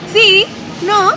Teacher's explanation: se escucha que hablan como como cantadito